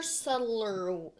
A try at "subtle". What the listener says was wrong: But you don't pronounce the B in subtle. That's what's tripping you up.